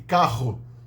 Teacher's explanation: Um R mais longo, mais vibrante